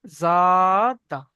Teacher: এক আলিফ আলিফ মাদ্দা, এক আলিফ টান দিয়ে পড়তে হবে